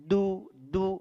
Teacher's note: huruf dal, ujung lidah bertemu dengan tempat tumbuhnya dua gigi seri atas.